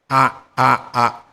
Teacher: kalau kita membaca alif itu posisinya di tenggorokan yang paling dalam